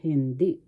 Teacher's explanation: The accent is in the second syllable